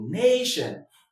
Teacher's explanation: being a noun with two syllables, the stress goes on the first syllable, nation. That's why the stress there.